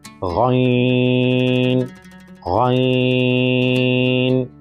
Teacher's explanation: یہ حلق کے اوپر والے حصے سے ادا ہوگا اور اس کو ہم پر کر کے موٹا کر کے پڑھیں گے